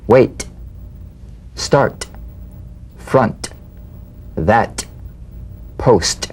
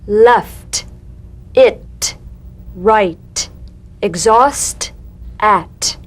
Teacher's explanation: The same staccato springing action as the D drum beat, with no voice, forms the light tap of the T. Feel a gentle pulsation in the tongue. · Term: unvoiced T